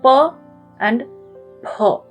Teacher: The Pha in Hindi, It's the aspirated version of Pa.